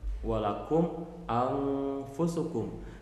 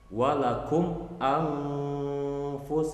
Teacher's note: Di sana nggak berubah karena mimnya bertemu hamzah, hukumnya idhar syafawi, dibaca tetap jelas.